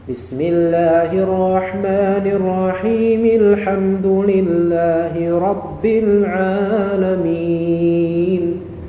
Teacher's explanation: ketika antum menyambungkan arrahim dengan alhamdu, maka mim di sini dia berharakat jadinya bukan sukun